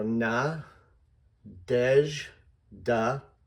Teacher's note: I've made the middle syllable the big one